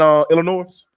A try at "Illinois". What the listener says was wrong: because I love you, I'm gonna ask you to never pronounce the S in Illinois again.